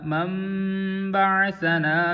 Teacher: نون ساکن آگے با ہے تو یہاں پہ نون ساکن کا اقلاب ہوگا، یعنی نون کو میم کے ساتھ بدل دیں گے